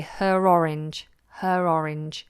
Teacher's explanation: So if you say it's her orange, for example, it's an orange that belongs to her, we'd say her orange, her orange. So that R becomes a little bit more coloured.